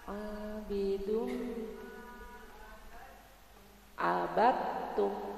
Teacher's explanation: Jadi dalnya enggak kedengaran suaranya, langsung masuk ke ta. Pada idgham mutaqariban.